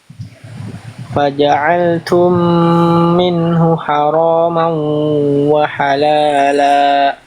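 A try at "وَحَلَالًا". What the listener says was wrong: Wahalalanya jangan sampai di ujung la-nya ada hamzah. Jangan wahalala la. Jadi jangan ngerem bunyinya. Jangan berhenti. Wahalala. Jadi ada hamzah sukun. Wahalala la. Jangan la. Jangan ada nya. Jangan ada itunya. Jadi kayak ada hamzah.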